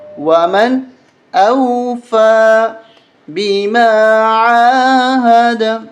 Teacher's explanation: نون ساکن کے بعد حرف حلقی میں سے حمزہ ہے، اس لیے یہاں پر غنہ نہیں کریں گے ، ومن اس طرح نہیں پڑھیں گے، ومن اوفا بما عاہد،